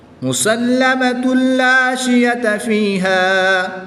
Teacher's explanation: تنوین کے بعد حرف ملون میں سے لام آ رہا ہے تو یہاں پر ادغام بلا غنہ ہوگا، یہاں پر غنہ نہیں کریں گے، الف مدہ ہی پڑھیں گے۔